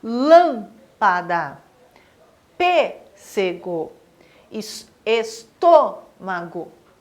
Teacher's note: O acento circunflexo também marca a sílaba tônica, só que ele dá um som fechado, um som grave para essa palavra